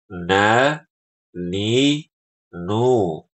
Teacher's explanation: jadi ada suara ee dengung di hidung kita